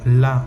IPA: la